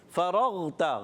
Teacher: غین حلق کے اوپر والے حصے سے